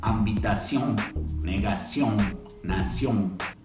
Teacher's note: porque si no no suena francés tiene que ser nasal y gutural